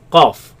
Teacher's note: the last part of the tongue moving up to touch the soft palate